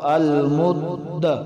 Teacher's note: اب دال جو ہے یہ حروف قلقلہ میں سے، تو جوڑ میں یہ ساکن تھی اس لیے اس پر قلقلہ کیا